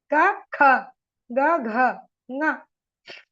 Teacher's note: So now I am giving you how the Karkasha Kantavyaha, the back of tongue touches the soft palate. So that is near the glottis.